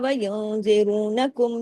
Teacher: نون ساکن کے بعد زا ہے تو اخفا حقیقی غنہ کاملہ